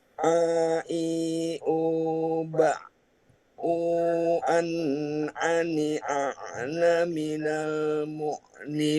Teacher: Ain keluar dari tenggorokan bagian tengah.